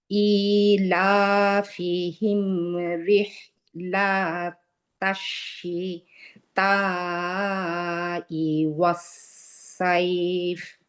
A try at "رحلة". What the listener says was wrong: আবার এইখানে রিহিলা লা টান হয়ে গেছে। রিহিলা তাশিতা।